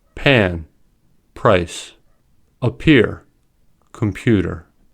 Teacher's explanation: When /p/, /t/, and /k/ come at the beginning of a word or at the beginning of a stressed syllable, they are aspirated. That is, they are pronounced with a small puff of air